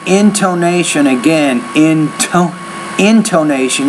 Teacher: when you say intonation, again, intonation, you have to pronounce that T with more air.